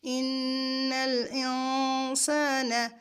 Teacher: حروف اخفاء میں سے، تو نون پر گنہ نہیں کریں گے، گنہ کریں گے مگر نون کی آواز کو ہم چھپائیں گے